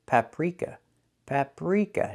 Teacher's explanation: The R is voiced, not rolled.